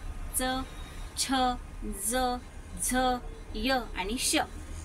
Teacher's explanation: ज्या वर्णाचा उच्चार जिभेचा स्पर्श दात व तोंडातील वरील बाजूस टाळू होऊन होतो त्यांना दंत तालव्य व्यंजन असे म्हणतात